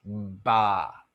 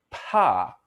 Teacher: Kind of feel the vocal cords start vibrating before your lips open up. And you don't feel that puff of air for ba. Ba. But you do for pa. Pa. Because For pa, again, your vocal cords don't start vibrating when your lips part.